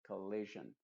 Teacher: la primera O también es una schwa y la última O también es una schwa.